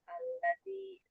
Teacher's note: Zal ujung lidah bertemu dengan ujung gigi sari atas.